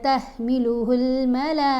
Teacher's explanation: گول تا کے اوپر اگر وقف آ جائے تو تا خاموش ہو جاتی ہے، سائلنٹ ہو جاتی ہے اور یہ ہا کی آواز دے گی